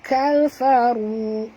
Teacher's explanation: Ka ya, jangan tebal. Kafaru, ru saja yang tebal. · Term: ru tebal